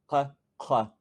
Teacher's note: uvular, which means you pronounce them basically as far back as you can get your tongue